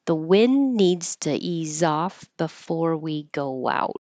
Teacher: You won't hear the D in wind, but we know what it is because it's in context of it needs to ease off before we go out.